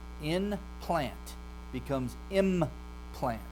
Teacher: It stays a nasal from n to m, but because the one consonant p is a bilabial, it makes the other one become a labial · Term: regressive assimilation